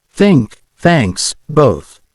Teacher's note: not be too hard or too soft just a gentle touch the sound should be a breathy sound almost like blowing air